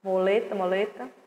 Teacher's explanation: Mu com lé e o tá fica muleta. Se escreve com mu, mas se pronuncia moleta.